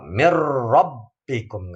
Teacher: Memasukkan huruf nun mati atau tanwin pada huruf berikutnya tanpa disertai dengung, tanpa ada getaran di hidung · nggak ada dengung di hidung · dimasukkan pada huruf berikutnya sehingga menjadi satu huruf yang bertasydid tanpa dengung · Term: idgham bila gunah